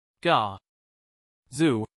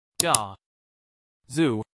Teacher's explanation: The stress is on the first syllable, ga.